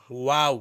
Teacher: واو تب ہم ادا کرتے ہیں جب ہونٹوں کو کیا ہے گول کریں